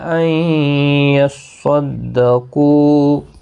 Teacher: أَن يَصَّدَّقُوا، صاد مستعلیہ ہے، پر پڑھا جائے گا، قاف بھی پر پڑھا جائے گا، قوہ مدہ ہے، ایک الف کی مقدار کے برابر کھینچ کر وقف کریں گے